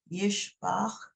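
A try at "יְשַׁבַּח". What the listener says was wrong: Well, not quite. Yishabach. Yishabach. There's a vowel under the shin. Yisha.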